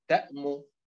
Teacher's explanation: لأن التاء هي حركتها هي المنبورة وليس الميم، لأننا إذا وجدنا حركتين في بداية الكلمة ليست منبورتين فالنبر على الأولى.